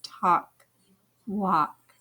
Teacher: in talk and walk the l is silent we don't hear it talk walk the a sound can be different after a w